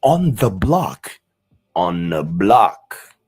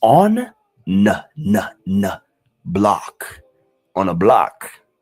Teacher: you barely hear the th in the word the. So instead of saying on the block on the block so it becomes onn block on a block.